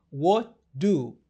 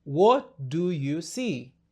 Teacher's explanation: unafaa kumeza ile t kisha kutamka d, inakuwa what do.